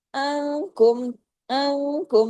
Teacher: नून साकिन के बाद काफ है ना, इख्फा हकीकी गुन्ने कामिला